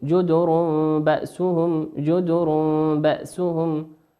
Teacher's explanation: وقوله سبحانه وتعالى جدر بأسهم في حالة الوصل جدر بأسهم جدر تنوين أتى بعده حرف الباء، والباء من حروف الإقلاب